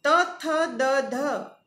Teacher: જીભનો અગ્રભાગ ઉપલા દાંત સાથે મળી હવાનો સંપૂર્ણ અવરોધ કરે છે ત્યારે આપણને દંત્ય સ્ફોટક વ્યંજનો મળે છે. ત, થ અઘોષ, દ, ધ ઘોષ, તેમજ ત અને દ અલ્પપ્રાણ વ્યંજનો છે, તેમજ થ અને ધ એ મહાપ્રાણ વ્યંજનો છે.